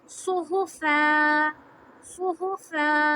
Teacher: आवाज़ इतनी लंबी रखेंगे, एक मद जितनी।